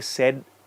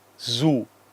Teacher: be quiet there has to be some vibration some movement Z so if I say said not much of a vibration Zoo there is a vibration here on the throat you have to ensure that s and Z is not mixed